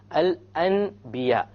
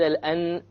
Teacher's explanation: instead of pronouncing the N sound, you pronounce the M sound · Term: iqlab